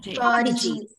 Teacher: it's a noun with two syllables, so the stress is on the first syllable